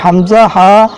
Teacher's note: حمزہ ہا حلق کے نیچے والے حصے سے ادا ہوتے ہیں